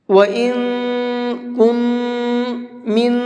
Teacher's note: وَإِن كُن، من، ان تینوں نون کو ناک میں چھپا کر کے پڑھیں گے